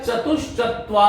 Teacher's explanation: च आ रहा है, इसलिए ये विसर्ग जो है इसका श बन जाएगा, तालव्य